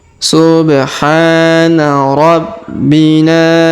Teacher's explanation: Huruf Ha kita panjangkan 2 harokat karena alif kecil di atasnya